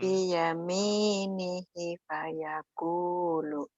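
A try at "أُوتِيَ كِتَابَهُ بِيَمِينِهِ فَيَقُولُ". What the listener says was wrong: Lagunya belum pas. Utiya kitabahu biyaminihi fayaqul. Kalau dihentikan, nanti dilatih ya, biar enak.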